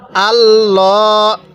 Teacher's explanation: আছে আল্লাহ শব্দের লামের পূর্বের হরফের উপরে যদি জবর থাকে তাহলে লামটা আমরা মোটা করে পড়বো অর্থাৎ পোর করে পড়বো